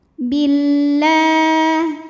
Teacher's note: alif lam menghadapi huruf Syamsiyah yaitu lam maka cara bacanya alif lam ini tidak kita baca Billah la ma Thobi'i muqaddar karena huruf lam barisnya fathah panjang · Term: alif lam syamsiyah